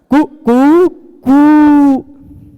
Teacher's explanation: पहले बार ह्रस्व रहता है, उसका फिर दीर्घ रहता है, फिर प्लुत रहता है